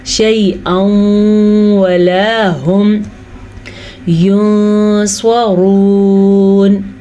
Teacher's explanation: را کو پر پڑھیں گے کیونکہ را پہ پیش ہے